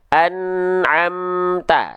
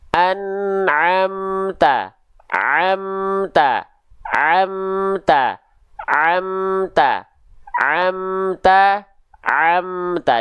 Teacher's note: Jadi rasakan huruf ain ini tepat pada makhrajnya, yaitu di tengah tenggorokan